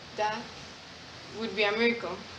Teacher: in standard American English, the TH sounds like a D, like similar to a D